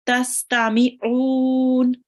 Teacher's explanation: Try to read the ayn from your throat.